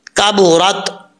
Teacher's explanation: کاف بریک ہے, اس کا مخرج ہے زبان کی جڑ